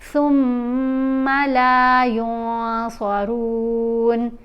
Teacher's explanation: सुम्मा ला युंसरून, नून के ऊपर इहफा है, मीम के ऊपर गुन्ना है। इहफा करते हुए नून की आवाज़ को नाक में छुपा कर पढ़ते हैं। इसको वाज़िया करके युन सारून नहीं पढ़ेंगे, युन सारून।